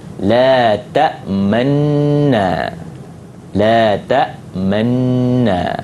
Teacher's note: dengan ishmam, idghamkan nun dan bagi isyarat dengan mulut yang muncung.